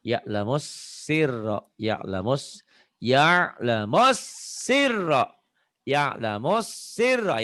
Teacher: Kayak ditahan tuh S-nya. Ya'lamus ada jeda.